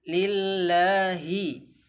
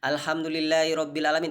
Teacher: hi itu harus kita baca sempurna, tidak boleh i